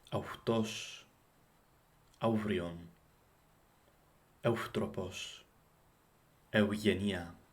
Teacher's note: the bilabial fricative component should be rounded, making this truly the intermediate point between the Attic au or eu and the modern Greek av or af and ev or ef.